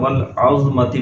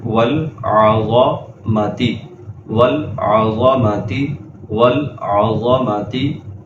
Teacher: عین کو ضا کے ساتھ ملا کر پڑھ لیتے ہیں۔ اس طرح پڑھنا جو ہے یہ غلط ہے۔